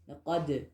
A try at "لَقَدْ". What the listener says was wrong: Laqad. It's not laqad, okay? Hey, I know what dal is. That's not the point. But the lam is where you messed up, the very first letter.